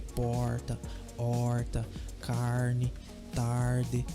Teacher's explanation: em português existe um som do R chamado de R retrô flexo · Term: R retroflexo